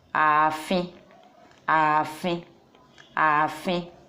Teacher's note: because it has long vowel a, ààfin, ààfin, palace